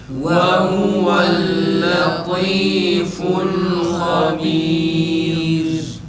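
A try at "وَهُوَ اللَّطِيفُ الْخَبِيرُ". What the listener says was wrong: Ra ince tekrar. Ha tam boğazdan çıksın. Ha bir de A sesi çıkararak uzatmadan yalnız tekrar.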